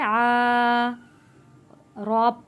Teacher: रॉ बारीक पढ़ी जाएगी, रॉ के नीचे ज़ेर है